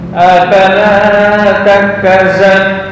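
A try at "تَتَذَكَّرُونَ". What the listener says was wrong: Bukan za. Bukan za. Zal. Sebentar, kayaknya kembali ke makhraj lagi ini. Ini nizal sin lo zal. Nah nizal.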